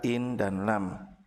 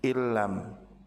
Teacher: Meleburnya huruf sukun pada huruf nun ke huruf berharokat setelahnya, yaitu huruf lam, sehingga dua huruf tersebut menjadi satu huruf yang ditasdid di huruf yang kedua, sehingga berubah bacaannya menjadi illam. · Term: idgham